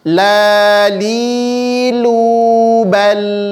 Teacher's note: lam tidak memiliki sifat pantulan atau qalqalah. Maka cukup dibaca la lilu bal, ngalirkan sedikit sifat tawasud pada huruf lam.